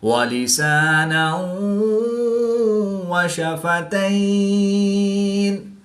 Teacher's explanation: یا ساکن سے پہلے تا پر زبر تو یا لین کے بعد نون کی زیر کو وقف کی حالت میں ساکن کریں گے تو یہاں پر وقف کی حالت میں مد لین عارض ہوگی، 2 سے 3 الف تک کھینچ کر پڑھیں گے۔ · 2 زبر کی تنوین کے بعد واو حروف غیر معلوم میں سے ہے تو یہاں پر ادغام مع الغنہ ہوگا، یعنی غنہ کر کے پڑھیں گے۔